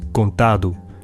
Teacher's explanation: the final T in contato becomes voiced D in Portuguese contado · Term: lenition